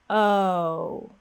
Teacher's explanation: need to glide the lips forward watch how my lips move notice how my lips start off a little bit more relaxed they're not rounded from the very beginning we don't pop the lips forward at the beginning like oh